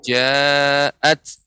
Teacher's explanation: Ta yang sukun ya, maka juga sifatnya hamus ya. Sedikit keluar udara. Ja'at, tidak ja'at.